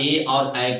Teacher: कंठ प्लस तालु मिलकर ये उच्चारण होता है ए और ऐ का